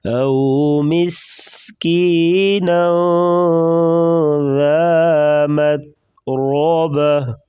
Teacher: مس سیٹی جیسی آواز نکالیں گے، نون کے اوپر اخفا ہوگا، مت تا کو باریک پڑھیں گے اور را کے اوپر زبر ہے تو را کو موٹا پڑھیں گے.